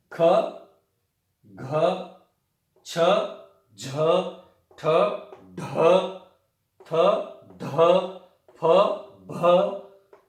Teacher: इनको बोलते समय महाप्राण, हमारी प्राणवायु को महान प्रयत्न करना पड़ता है। देखिए वर्गाणाम द्वितीय चतुर्थौ, वर्गों के द्वितीय और चतुर्थ यानी कि दूसरा और चौथा वर्ण, और शल इनका महाप्राण बाह्य प्रयत्न होता है।